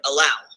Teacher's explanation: an unstressed syllable followed by a stressed syllable like in the word allow I hope this clarifies the terms